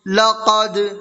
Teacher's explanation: لقد، لام زبر لا، قاف دال زبر قد، لقد، دال حروف قلقلہ میں سے ہے اور دال کے اوپر جزم ہے تو اس میں قلقلہ ہوگا